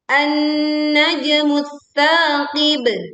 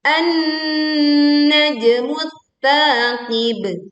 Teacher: Alif lam melebur ke huruf tsa sehingga alif lam tidak terbaca. Kita langsung menekan ke huruf tsa, lalu memanjangkan sa 2 harokat, lalu kita berwakaf di huruf ba sukun dengan suara pantulan yang kuat dan jelas.